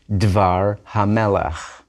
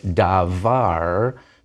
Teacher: Notice there's no accent on dvar. It's no longer davar, but dvar hamelach. When you have a construct form, the emphasis moves away from it, so the vowels closer to the beginning may get shorter.